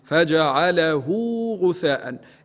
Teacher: إذن هذا النوع من أنواع المدود يتسمى مد الصلة. الإمام قالون يقرأه يعني طبيعي بالحركتين